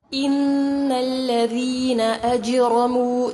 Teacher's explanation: نون مشدد پر غنہ کیا جائے گا، ذال نرمی سے پڑھیں گے، جیم ساکن پر قلقلہ ہوگا، را مخفم کیا جائے گا.